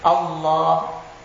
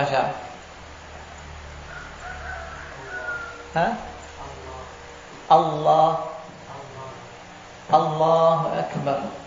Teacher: lam lamnya itu dipertebal makhrajnya di lam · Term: lam mufakam